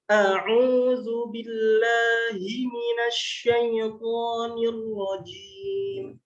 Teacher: Huruf pertama ada huruf hamzah. Makhraj dari huruf hamzah itu keluar dari pangkal tenggorokan